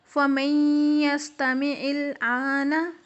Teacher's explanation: فَمَن يَسْتَمِعِ الْآنَ، غنہ کی مقدار 2 سے 3 سیکنڈ، یعنی کہ ہم نون کی جو نیزل ساؤنڈ ہے اس کو 2 سے 3 سیکنڈ ادا کریں گے اور اس کے بعد یا کو پڑھیں گے